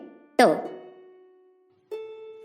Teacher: भाषा विज्ञान ने ट वर्ग के इस प्रथम व्यंजन को मूर्धन्य स्पर्श अघोष तथा अल्प प्राण कहा है